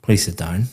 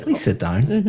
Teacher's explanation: my intonation is going up sounds completely different but the words are exactly the same so · very flat intonation going down